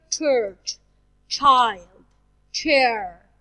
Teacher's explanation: So the sound ch, it's voiceless.